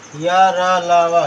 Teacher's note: अंतस्थ व्यंजन या र लावा, ये अंतस्थ व्यंजन कहलाते हैं। इनका उच्चारण करते समय मुखांग पूर्णतः स्पर्श न कर आंशिक स्पर्श करते हैं। इनकी स्थिति स्वरों व व्यंजनों के बीच की मानी गई है।